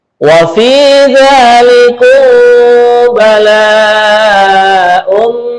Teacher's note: mim mati bertemu dengan ba, namanya adalah ikhfa syafawi, dibaca mendengung ya